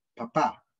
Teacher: no existe vibración de las cuerdas vocales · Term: sordos